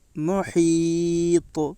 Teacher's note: طا حروف قلقلہ کے 5 حرفوں میں سے ایک ہے، اس لیے طا میں قلقلہ ہوگا۔